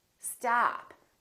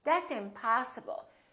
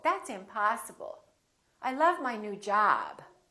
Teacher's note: we prolong the ah in the stressed syllable